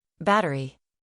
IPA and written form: ˈbæt.ər.i (Battery)